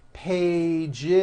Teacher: page for example which ends in an in a voiced sound one page becomes two pages with that voiced Z